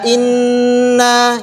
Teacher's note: Huruf nun kalau dia bertasydid maka ada sifat gunnahnya dua harokat.